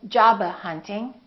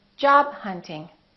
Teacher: more words they have a stop followed by another consonant remember hold it don't release the final stop